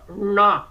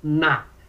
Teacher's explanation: Aí você tem o N no céu da boca, na, como caipira, perna, na. E no dente, na.